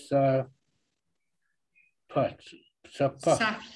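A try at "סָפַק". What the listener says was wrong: Sapak. Sapak. Can you see that's a kuf?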